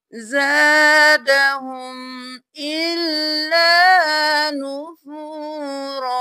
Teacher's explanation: یہاں پر ہم جب وقف کریں گے تو ہم نون کو بالکل چھوڑ دیں گے